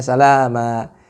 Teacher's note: ada mad iwad ya, yang terbaca masih dengan sukun ya, padahal di sini harus dikembalikan kepada mad asli atau mad tabi'inya